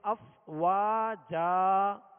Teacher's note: جیم جیم کے اوپر دو زبر ہیں. دو زبر کی تنوین جب بھی آئے اور وقف کریں تو اسے الف سے بدل کر وقف کرتے ہیں. الف سے بدل کر یعنی افواجن کہہ کر سانس آواز نہیں توڑیں گے بلکہ وقف کرتے ہوئے الف سے بدلیں گے یعنی ایک حرکت پڑھیں گے زبر پڑھیں گے افواجا.